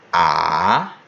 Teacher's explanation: the third tone is the dipping tone, where you start high, go low, and come up high again. Something like ah.